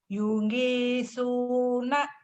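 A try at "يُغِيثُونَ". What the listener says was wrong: Jawanya keluar. Nyungi, jangan nyungi, yogi. Yogi kan ada nama orang yogi, yogut. Jangan nyongut. Yogi jangan nyungi atuh yogi. Tapi G-nya agak rapuh dikit. Yogi suna.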